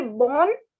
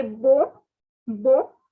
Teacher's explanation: please don't pronounce the end don't say born say bo bo the last r is not to be pronounced